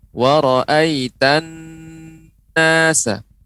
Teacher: Nah, itu karena tasydid, nun yang bertasydid itu harus dengan gunnah di pangkal hidung dan lebih ditekan.